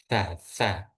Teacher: kalau yang C itu lidah itu berada di dua antara gigi atas sama gigi bawah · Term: huruf sa